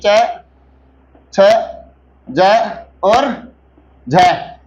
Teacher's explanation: इन्हें क्या कहा जाता है, स्पर्श संघर्षी व्यंजन कहा जाता है